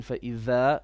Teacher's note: make your tha more clear. It was a bit like a za.